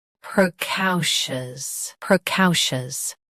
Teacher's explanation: Both US and UK have the same pronunciation of this word. Stress cow. Keep pr soft and shus smooth.